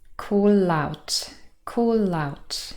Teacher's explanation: a preposition or an adverb starts with a vowel sound and so really we have consonant vowel linking here called catenation · Call ends in the consonant l, and out starts with the diphthong ow.